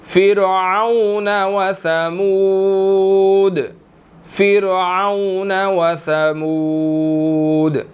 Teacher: تو یہاں پر را بریک ادا ہوگی کیونکہ اس سے پیچھے جو فا ہے اس کے نیچے زیر ہے، را بریک ادا ہوگی، ٹھیک ہے. اور آگے وثمود دال کے اوپر آخر پر کلکلا ہوگا